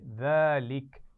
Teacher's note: اس میں ذال ہے، نرمی سے پڑھا جائے گا، سیٹی نہیں آنی چاہیے